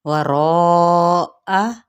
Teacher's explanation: यहाँ पे हमने चार हरकत लंबा करना है और हमजा की ज़बर को लंबा नहीं करना